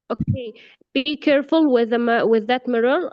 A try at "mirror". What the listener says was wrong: Be careful with that mirror. Mirror, not mirror, by the way. Mirror with a stress on the first syllable.